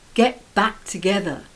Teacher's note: the stress is on back the preposition